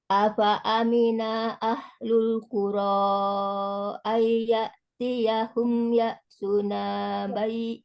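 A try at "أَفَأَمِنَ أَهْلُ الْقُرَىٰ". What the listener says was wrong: Diperhatikan lagi yang di afa amina ahlul. Itu jangan berhenti tuh dinanya. Afa amina ahlul.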